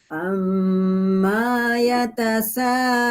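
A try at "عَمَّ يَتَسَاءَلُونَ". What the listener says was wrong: Maknya kepanjangan, Bu.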